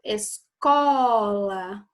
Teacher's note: o có é o mais forte. Alto, ao, que é a sílaba tônica.